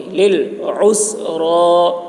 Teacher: عین کو حلق سے ادا کریں گے، را پر ہوگی، لِلْعُسْرَى.